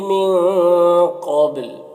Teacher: وقف کی صورت میں لام کا پیش سکون سے بدل جائے گا